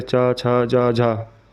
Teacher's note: चा, छा, जा, झा तालव्य स्पर्श व्यंजन है, लेकिन इनके उच्चारण में स्पर्श के बाद हवा कुछ रगड़ कर यानी संघर्ष के साथ बाहर निकलती है, इसलिए इन्हें स्पर्श संघर्षी कहते हैं।